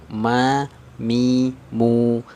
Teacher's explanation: makhrajnya dari syafatain jadi bibir atas bibir bawah bertemu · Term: huruf mim